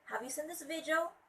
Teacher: it's a rising intonation at the end of the word.